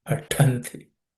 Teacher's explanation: So there should be extra air and some effort is needed to chant pathanti. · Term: aspirated consonant